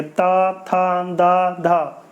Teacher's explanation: जब आप बोलते हैं तो आपकी जीभ दांत से टकराती है